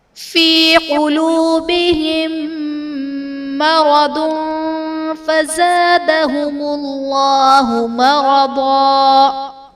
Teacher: قلوبہم مرض میں میم ساکن کے بعد دوسری میم ہے، تو یہاں پر ادغام شفوی کا قاعدہ ہوگا، یعنی میم ساکن میں ہم غنہ کر کے پڑھیں گے۔